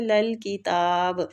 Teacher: تا کو کھڑی زبر کی وجہ سے کھینچیں گے